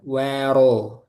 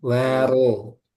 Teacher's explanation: Wawunya di sini tipis, roknya tebal.